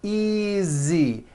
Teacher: the S is like a voiced Z